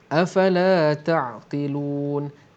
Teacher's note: Kalau berhenti jadi mad arid li sukun dua harakat ataupun empat harakat ataupun enam harakat.